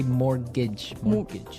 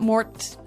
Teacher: it has a T in it, but you don't pronounce it. You say mortgage.